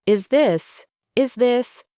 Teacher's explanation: The first two words is this link together with the s sound.